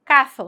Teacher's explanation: sonido interdental para el cesseo con C